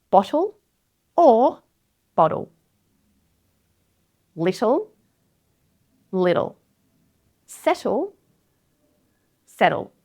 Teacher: the T flap occurs and that T changes into a T flap